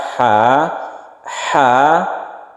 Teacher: dia itu di tengah-tengah tenggorokan kita sebut dengan wasatul halq atau wasatul halqi wasatun itu artinya tengah-tengah jadi dia itu kita